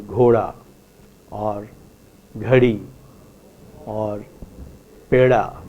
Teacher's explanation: So that the context is between two vowels. Between two vowels, in Hindi, let us say, you do not hear a da but a ra. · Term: flap